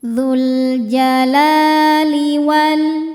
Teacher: La hukumnya mad thabi'i muqaddar. Sebab huruf lam berharakat fathah panjang. Cara bacaannya panjang dua harakat.